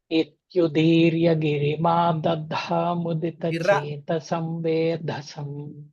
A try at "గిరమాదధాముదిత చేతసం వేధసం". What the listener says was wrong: గిరి అంటున్నారు. గిరం ఆదధ, గిరమాదధ. ఉత్కటేత్యుదీర్య గిరమాదధాముదిత చేతసం వేధసం. అలా చెప్పండి.